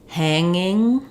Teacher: I don't have a g sound in there it's just the NG sound but in angry or anger um I have the NG sound · if I have a word like hanging, I don't have a g sound in there. There's just the ng sound.